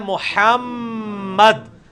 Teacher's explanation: میم پہ غنہ بھی کرنا ہے کیونکہ یہ میم آ گئی ہے. میم اور نون دو ایسے ہیں جو غنہ بھی ہوتے ہیں, یعنی آواز ناک میں لے کے جائی جاتی ہے